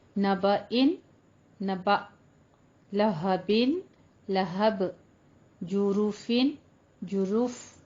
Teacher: दो ज़ेर और दो पेश पर जब हम वक्फ करेंगे तो उसको हमने साकिन कर देना है